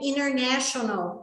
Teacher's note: o N antes do T, ele reduz o som do T